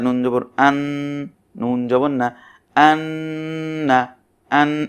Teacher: এই যে আন উচ্চারণ করার সময় নুনটা যেমন একটা গুনগুন একটা একটা আওয়াজ, এই আওয়াজটাকেই গুন্না বলা হয়। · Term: ওয়াজিব গুন্না